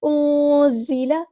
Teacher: نون ساکن کی آواز کو یہاں ہم چھپا دیں گے کیونکہ یہاں پہ اخفا ہوگا · زا کو سختی سے ادا کریں گے، ہمارا لائٹ لیٹر ہے، باریک پڑھیں گے